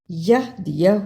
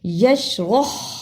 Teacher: پہلے ہا کو ہم نے نرمی سے پڑھ دیا جبکہ دوسرے ہا کو ہم نے صحیح حلق سے نکالا